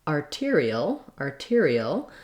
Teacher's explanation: we have actually a real t because this syllable tear is stressed